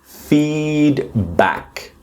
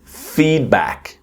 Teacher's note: Feedback, where the strong syllable is the first one.